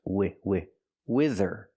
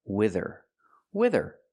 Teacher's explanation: use a short I like this is wi wi wither and the th makes a voice sound